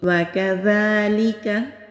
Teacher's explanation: जाल जब अदा करेंगे तो ज़ुबान की टिप सामने के जो ऊपर के हमारे दो दांत हैं वहाँ पर टच होगी